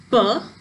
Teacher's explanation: when producing the sound P, the lips come together and the air is released with a puff of air